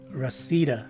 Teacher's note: the stress is in the second syllable of the word, and both letter A's are swas sounding letter A's.